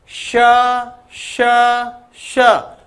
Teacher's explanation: तीनों में ही गूंज नहीं है दूसरा सांस लगातार चल रही